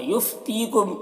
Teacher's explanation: تی میں یا مدہ ہے، ایک الف کے برابر کھینچیں گے